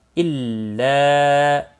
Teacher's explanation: الف مدہ ہے ایک الف کے برابر کھینچ کر پڑھیں گے